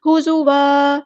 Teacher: زا یہ ذال نہیں ہے، غور سے دیکھیں یہ زا ہے، زا سختی سے ادا کرنا ہے، لائٹ لیٹر ہے، سیٹی آئے گی